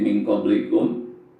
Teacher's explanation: nun mati ketemu huruf qaf, maka nun matinya dibaca samar-samar ya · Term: ikhfa